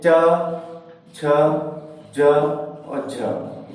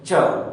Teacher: एक संघर्ष के साथ वायु निकलती है। जैसे कि आप उच्चारण करें च, बाद में आप देखेंगे कि वायु निकल रही है, वायु मुख से निकल रही है, तो वो किस में आएगा, स्पर्श संघर्षी में।